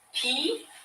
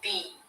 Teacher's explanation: p no vibration and b vibration